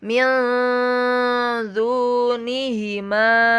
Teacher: ketika kita melafalkan nun, lidah kita itu sudah membaca, sudah pada posisi huruf yang di depannya. Dalam hal ini za. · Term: ikhfa